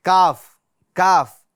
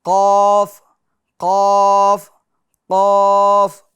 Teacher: کاف کاف یہ باریک والی آواز ہے، قاف قاف قاف یہ پور والی آواز ہے، کاف قاف کاف قاف، دونوں کی آواز میں فرق ہے۔